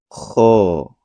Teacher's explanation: K mempunyai sifat hams dan rakhawah. Jadi saat melafazkannya terdengar aliran nafas dan suara ikut mengalir · Tempat keluar huruf kho dibunyikan dari tenggorokan bagian atas, sedangkan o dibunyikan dari pangkal lidah, yaitu saat membunyikannya lidah dinaikkan ke langit-langit bagian dalam. Kho mempunyai sifat hams dan rokhowah, jadi saat melafadzkannya terdengar aliran nafas dan suara ikut mengalir.